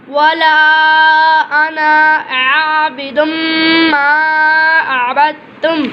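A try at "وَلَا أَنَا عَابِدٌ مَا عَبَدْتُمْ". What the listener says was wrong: आना कहेंगे, अना नहीं कहेंगे। वला अना आबिदुम मा अबदतुम।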